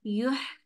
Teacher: या के पेश के लिए होंठ गोल और हा के लिए सीधे।